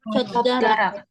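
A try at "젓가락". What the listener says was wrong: Karak. Sama pakai K-nya ya. Karak. Jadi ketika siat sama giok ketemu juga, maka gioknya akan jadi sang giok juga. Sama ya. Jadi cekarak, sukarak.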